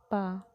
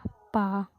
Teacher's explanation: फिर आपके पा वर्ग से लेके माँ तक ये ओठ से निकलते हैं, ओठ बंद हो जाए, पा, पहले ओठ चिपकेगा फिर खुलेगा